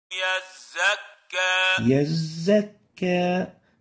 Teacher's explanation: make sure to give the zay its whistle characteristic